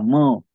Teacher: अनुनासिक म्हणजे काय यांचा उच्चार नाकातून होतो